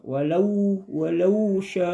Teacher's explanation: Dia panjang dalam penyebutan lau itu 2 harakat